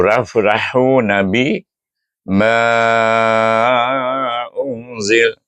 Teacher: perhatikan saya baca dengan panjang pada ma tu kerana huruf mad bertemu dengan hamzah secara berpisah